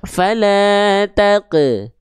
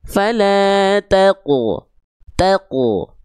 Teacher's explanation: Dia pantulannya nggak dibaca fala taqe, tapi fala taqu, taqu. Angkat pangkal lidahnya sehingga bunyi pantulannya tebal.